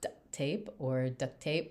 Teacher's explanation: And so we decided they just, wouldn't really burrow that K in because it's like when you say duct tape fast, you don't really hear the K very much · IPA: [dəktep ~ dəʔtep]